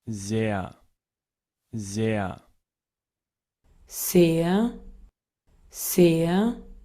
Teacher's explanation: El uso de la S vibrante, eso es lo que usa un alemán.